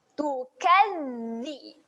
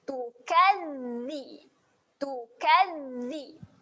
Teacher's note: Tahan di makhraj huruf zal iaitu jelirkan lidah.